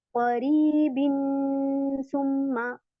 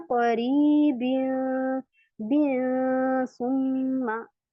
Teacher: इसके बाद यहाँ पे देखिए करीबिन, करीबिन, अब मैं यहाँ पे बिन नहीं बोल रही हूँ क्योंकि यहाँ पे तनवीन है ना, बिन आएगा ना, जैसे करीबिन, बहुत सी सिस्टर करती हैं करीबिन सुम्मा, ऐसे नहीं होगा क्योंकि नून को हमने छुपाना है और ये नून हमारा गुन्ना में छुप जाता है जब हम इसको नाक में ले जाते हैं। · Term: इक्फा